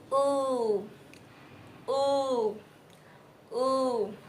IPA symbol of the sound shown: u: